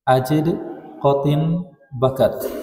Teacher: Hanya dia punya sifat tambahan nanti, sifat qalqalah. Ajid, dal, suara langsung tertahan. Sama udara juga tertahan. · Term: syiddah